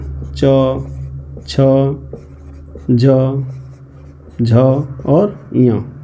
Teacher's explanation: ऐसे वर्ण या अक्षर जिनको बोलने में जिह्वा तालु को स्पर्श करती है, ठीक है, उसे हम क्या कहते हैं, तालव्य वर्ण।